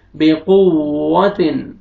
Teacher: واو پہ آپ نے لپس کو راؤنڈ میں لے کے جانا ہے होंठ आपने गोल करना है ताकि अच्छी तरह वाव की अदायगी हो।